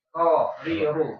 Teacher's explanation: Punggung lidah menyentuh gusi gigi atas. Jadi ujung lidah sedikit ke dalam itu maksudnya punggung lidah. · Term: huruf ro